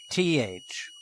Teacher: Le souffle est bloqué par la langue, dont la pointe est fermement contre les dents avant supérieures. The breath is blocked by the tongue, the tip of which is firmly against the top front teeth. Le souffle se pressurise dans la bouche.